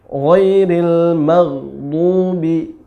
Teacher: maghdu tebal, mulutnya dimonyongkan karena dhammah